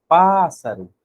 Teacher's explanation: o pá saiu mais forte e mais demorado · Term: sílaba tônica